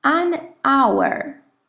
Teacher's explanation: You don't hear the H. No escucháis la H.